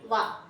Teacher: next దంతోష్యం దంతోష్యం ఓష్యం అంటే పెదవ అని చెప్పుకున్నాం కదా పెదవలు మరియు దంతాల సహాయంతో పలకబడతాయి కాబట్టి దీన్ని దంతోష్యం అంటారు